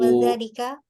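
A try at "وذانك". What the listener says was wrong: Pakai nun apa pakai lam? Pakai nun. Wadhanika زميلايا.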